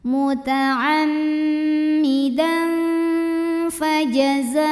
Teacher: Dan ada hukum ikhfa awsat karena ada tanwin fathah yang menghadapi huruf fa. Maka bunyi tanwinnya samar-samar, siap-siap mau bilang fa disertai dengung. Nah, kalau fa ini makhrajnya tidak terlalu dekat, tidak terlalu jauh dari nun ya, sehingga bunyi samar dan dengungannya sama.